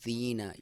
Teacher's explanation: یا ساکن سے پہلے زیر ہو تو اسے یا مدہ کہا جاتا ہے، اور اس کی لمبائی بھی 1 الف کے برابر یا 1 سیکنڈ آپ نے اپنی آسانی کے لیے سمجھ سکتے ہیں کھینچنا ہوتا ہے یا لمبا کرنا ہوتا ہے۔